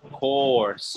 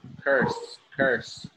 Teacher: Course, oh no, it has 4, and so does curse, but the difference is, you know, that second sound, that o or that So for course, curso, you say course, you know, round your lips, course, it's like an O. And curse, your bottom lip out, curse.